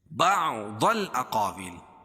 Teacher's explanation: ضاد کو موٹا پڑھیں گے کیونکہ حروف مستعلیہ میں سے حروف مستعلیہ 7 ہیں.